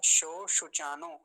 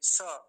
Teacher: स नहीं बोलेंगे स दंती सकार वाला वैसा उच्चारण गलत मान माना जाएगा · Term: तालव्य सकार